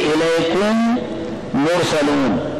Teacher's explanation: इदगाम शफवी क्यों कहते हैं कि मीम शफवी हर्फ है, इसका मखरज शफतैन था, तो इसलिए कहते हैं इदगाम शफवी।